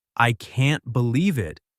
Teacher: in the sentence, I can't believe it, the emphasis is on can't